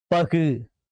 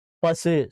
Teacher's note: இப்ப முற்றிய உகரம் வந்து சொல்லப்படும்போது முழுமையா ஒலிக்கும். அந்த ஊங்கிற ஓசை முழுமையா ஒலிக்கும். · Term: முற்றிய லுகரம்